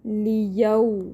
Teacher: لیاؤ، واو لین ہو رہا ہے، واو ساکن سے پہلے یہاں پہ زبر ہے تو واو لین 1 الف کی مقدار اور نرمی سے ادا کریں گے